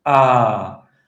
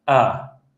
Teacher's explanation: the difference was that the vowel on the left was a longer vowel, ah, whereas the vowel on the right was a shorter vowel, uh.